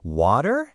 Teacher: Notice how I almost say a duh sound in the middle. Water? That's a very American thing.